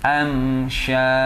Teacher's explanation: Nah, ketika am kan bibir merapat. Maka jangan mendengung, harus jelas. Am syaj. Nah, syaj. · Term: izhar syafawi